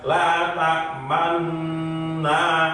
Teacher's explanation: Ya, jadi nggak usah balik lagi, langsung ketika nyaut dengung yang nun tasydid itu bibir langsung dimonyongkan ke depan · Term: praktek yang kedua